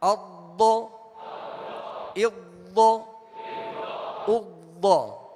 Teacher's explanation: ضاد زبان کی کروٹ اور اوپر کی داڑھوں کی جڑ سے، زبان کی جو کروٹ ہے یہ جڑ زبان کی جانب جو ہے، یہ کروٹ اگر سیدھی جانب پر لگائیں گے اوپر کے داڑوں سے، اوپر کی داڑوں کی جڑ سے، تو یہ تھوڑا مشکل ہو جائے گا. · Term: ضاد کا مخرج